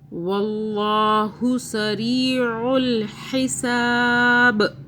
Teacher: عین کو حلق سے پڑھنا ہے، ہا کو بھی